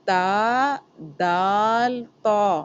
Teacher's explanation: زبان کی نوک سامنے کے دانتوں کے جڑ سے لگ رہی ہے